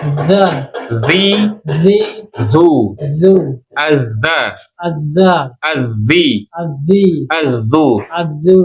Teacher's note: kalau dza itu terasa getaran di jakun ya pita suara itu letaknya di jakun · Ini ujung lidah ketemu dengan ujung gigi seri bagian atas dikeluarkan ya. Jadi bunyinya karakter sama ada gesekan ya. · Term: zal